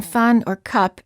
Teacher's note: the uh sound as in fun or cup is a neutral vowel meaning that everything in your mouth is relaxed and the lips are just very slightly open